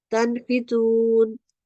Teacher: we will say the nun sound clearly and without elongation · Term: huruful izhar